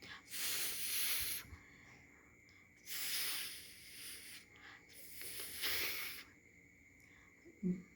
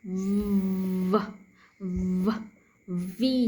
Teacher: F, no voicing, and V voicing